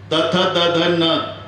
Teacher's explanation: प्रत्येक वेळेला जीभ आतून धक्का मारते दाताला. त थ द ध आणि न दंते.